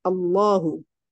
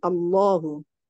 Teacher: menebalkan huruf lam pada lafaz Allah